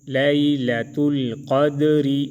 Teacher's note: دال میں قلقلہ اور را کو باریک پڑھیں گے